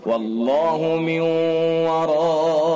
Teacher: واللہ من ورائہم، نون ساکن ہے، نون ساکن کے بعد یا واو میم نون میں سے واو ہے، ادغام ناقص بالغنہ ہوگا